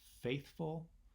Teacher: a word like faithful where we get really kind of the sound of an even stress on both syllables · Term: spondee